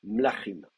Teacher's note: Et l'accent tombe sur la dernière syllabe. C'est la dernière syllabe qui est accentuée.